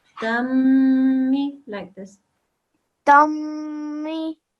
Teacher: You don't make a nasal sound, you just make the meme sound, the meme mushaddad